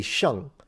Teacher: do not pronounce the G because it's used to nasalize the N